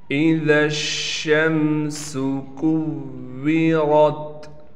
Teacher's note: اسی طریقے سے کاف کو واو سے ملائیں گے، واو پر تشدید ہونے کی وجہ سے تھوڑا ٹھہراؤ یعنی سختی کریں گے۔ را کو موٹا کرنے کے ساتھ را کو تا سے ملا دیں گے۔